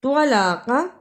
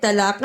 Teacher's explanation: طلاق، اسے طلاقہ نہیں پڑھنا، طوا کی جگہ پہ تا کی آواز نہیں آنی چاہیے۔